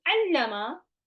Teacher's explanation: the first lam had a sukoon and the second lam has a fatha, and they got merged into one, and there is a shadda there. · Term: idgham